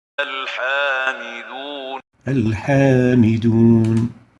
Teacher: the ha is not among the khussadat al-qidh letters, so it's going to be pronounced with attenuation